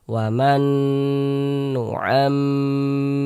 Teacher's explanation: Karena dia gunnah, cara membacanya itu digunnahkan itu ya didengungkan. Jadi suaranya itu kita tahan, kita panjangkan sejenak. Nu'am, di bagian nu'amnya itu yang kita tahan, kita panjangkan sejenak. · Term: gunnah musyaddadah